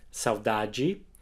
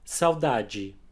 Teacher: The strongest syllable is the middle one, saudade, and the unstressed D and E at the end of words, like this one, will always have a G sound.